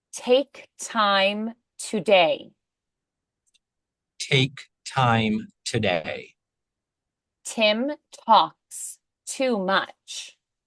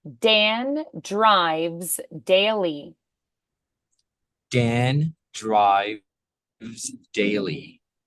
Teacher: T is voiceless, D is voiced.